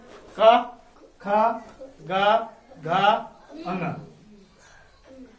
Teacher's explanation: का वर्ग में 5 वर्ण आते हैं। पांचों वर्णों को किस ध्वनि से बोला जाता है? कंठ ध्वनि से।